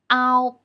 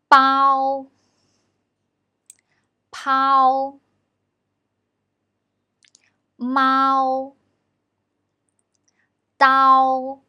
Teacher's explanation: We pull our tongue a bit back when we pronounce a here. It's loud and clear, but the tongue position is lower to pronounce o here than we pronounce the simple final o.